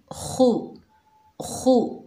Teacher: खा को जब अदा करेंगे तो हल्के से खराटे की आवाज़ आएगी